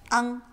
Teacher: the vowel is a little flatter, so it's not wrong with an ONG, but closer to AHNG, like somebody going, ah, and then adding an NG at the end